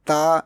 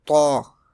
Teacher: Ta is pronounced in a thin tone and to is pronounced in a thick tone.